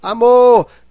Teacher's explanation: o mor é a sílaba mais forte. Então, a sílaba mais forte, aquela que é pronunciada com maior intensidade, nós chamamos de sílaba tônica.